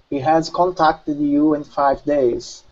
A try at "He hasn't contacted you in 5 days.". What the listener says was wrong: Okay, make sure to pronounce that hasn't. He hasn't contacted you in 5 days.